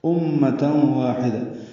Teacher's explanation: امہ میں میم مشدد پہ غنہ ہے